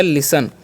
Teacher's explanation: एस का उच्चारण स, यहाँ पर टी साइलेंट कर देना है EN से न, तो हो गया लिसन।